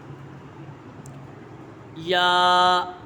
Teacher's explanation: یا یہ حرف شجریہ ہے، اس کا مخرج ہے زبان کے درمیان اور تالو کے درمیان سے ادا ہوتا ہے۔